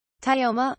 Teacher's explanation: Tio, one syllable in which you should treat Tai as a consonant cluster, is at a medium-high pitch and MA falls past neutral to a medium-low pitch. Most humans who do not already speak a pitch-based language will hear this as the Tio being stressed. The single apostrophe signals that the pitch drops on MA. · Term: falling pitch